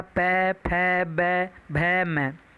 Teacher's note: उसके बाद पै वर्ग, ओष्ठ, आपके होठ आपस में टकराएंगे, अर्थात इनको बोलने में होठों का इस्तेमाल होगा। पै, फै, बै, भै, मै, ये सब ओष्ठ वर्ण होते हैं।